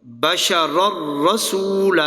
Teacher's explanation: ادغام تو ہوا پر غننے کے بغیر